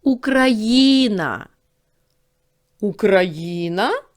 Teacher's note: в слові Україна наголошений третій склад